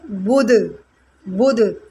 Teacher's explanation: یہاں پر یہ دال ساکن ہو جائے گا اور اس کو ہم نے قلقلہ کے ساتھ پڑھنا ہے